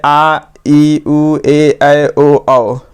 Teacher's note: वैसे स्वर जिनके उच्चारण में ह्रस्व स्वर की अपेक्षा दुगुना समय लगे, उसे क्या कहते हैं, दीर्घ स्वर कहते हैं। इन्हें क्या और क्या बोलते हैं, द्विमात्रिक भी कहा जाता है, और इनकी संख्या कितनी होती है, 7 होती है, ठीक है।